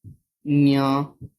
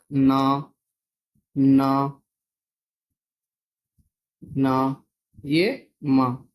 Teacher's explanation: क से लेकर मां तक जो आखिरी जो पांचों वर्ण है वो सभी नासिका में ग्रहण होते हैं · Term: नासिक्य